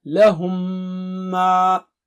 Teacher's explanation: मीम पर तद लगा दी जाती है और आपको मालूम है जब तद आए तो गुना होगा गुना यानी नाक से आवाज दो हरकत